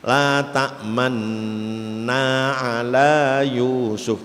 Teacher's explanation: Jadi seakan nu tapi isyarah bibir saja